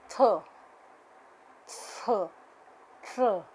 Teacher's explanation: sounds produced with the contact of the tip of the tongue and the upper front teeth. The tip of the tongue is the active articulator and the upper front teeth are the passive articulator. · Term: dental sounds